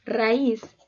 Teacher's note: palabra de dos sílabas su sílaba tónica se encuentra en la última sílaba